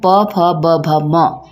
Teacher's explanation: जब भी हम प फ ब भ म इन ध्वनियों का उच्चारण करते हैं तो हमारे होंठ आपस में टच होते हैं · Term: ओष, ओष्ठ्य